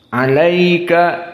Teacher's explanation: di sini ada mad lin karena ya sakinah sebelumnya fathah, maka dua harokat.